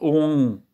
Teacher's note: C'est une nasalisation en fait du M final.